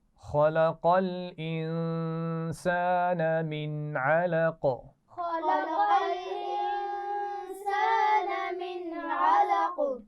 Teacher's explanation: اور قاف پر دوبارہ قلقلہ ہوگا کیونکہ جب ہم وقف کریں گے تو اس کو ساکن کر دیں گے